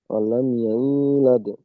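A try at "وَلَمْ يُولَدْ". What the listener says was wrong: ওয়ালাম ইয়ায়ু হয়ে যাচ্ছে ওয়ালাম ইউলাদ।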